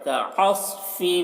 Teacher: صاد کو موٹا کر کے پڑھنا ہے